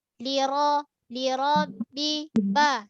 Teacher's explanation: Sifat ba ni syiddah, tertahan dari segi suara.